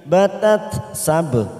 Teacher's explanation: ba sukun qala sugro kita pantulkan